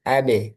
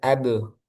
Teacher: Ketika sukun memantul AB. Karena ini tipis maka pantulannya juga tipis. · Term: ba sukun